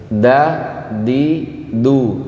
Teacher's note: Ujung lidah menempel ke gusi.